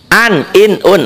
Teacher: bunyi nun mati atau tanwinnya dibaca terang, dibaca jelas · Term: idhar